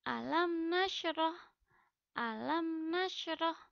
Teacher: mim sukun dibaca jelas tanpa disertai dengan dengung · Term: izhar syafawi